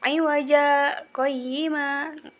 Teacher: Jadi aywaja berhenti sejenak, tanpa bernafas, sekedar satu alif. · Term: bacaan sakta